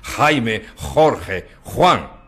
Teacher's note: Pero los castellanos consideran que la G y la J representan esta aspiración, y a veces un poco fuerte